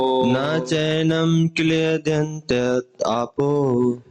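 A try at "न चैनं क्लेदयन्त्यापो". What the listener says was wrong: If you chant with if you break the words, it will be difficult to chant. You chant together. Na chainam kledyantapo. Not tapo, tyapo.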